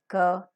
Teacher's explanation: through the mouth the oral cavity also is shut off where the back of the tongue makes a contact with the soft palate or the velum thereby blocking the air and compressing it and holding it for some time when the active articulator the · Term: plosive